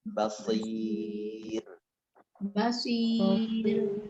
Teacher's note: Getaran ro-nya itu sedikit saja. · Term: tarkib